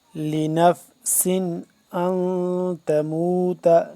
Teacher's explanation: وما كان، وما كان لنفس ان تموت، لنفس نون یہاں پہ سین دو زیر سین، سین کو سختی سے سیٹی کی آواز سے پڑھیں گے